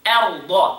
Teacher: همزة light, را and ضاد are heavy.